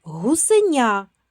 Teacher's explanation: В слові гусеня перед буквою я приголосний вимовляється м'яко.